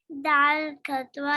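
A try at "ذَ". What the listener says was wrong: Not dal. This is zal. Zal kasra.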